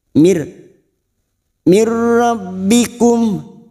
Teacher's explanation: bertemu dengan dua huruf ini yaitu huruf lam dan huruf ro namanya idgham bila guna hanya masuk tanpa mendengung